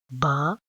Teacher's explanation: با دونوں ہونٹوں کے تر حصے سے ادا ہوتا ہے